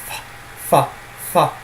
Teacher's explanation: Of course, for the ancient Greeks, pa became the bilabial fricative, fa, fa, where you sort of blow a fly off your nose, as they say.